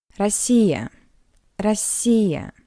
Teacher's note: In an unstressed position, the letter O read as a weak A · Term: unstressed O